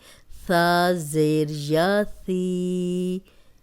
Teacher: یہ نرم حرف ہے اور اس میں سیٹی کی آواز نہیں آئے گی